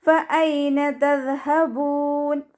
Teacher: ഫ ലൈറ്റ് ആക്കിയിട്ട് ഉച്ചരിക്കുക. മേലെ മുൻപല്ലിൻ്റെ അറ്റം താഴെ ചുണ്ടിൻ്റെ ഉൾവശത്ത് നനഞ്ഞ ഭാഗത്ത് വെച്ചിട്ട് ഉച്ചരിക്കുക.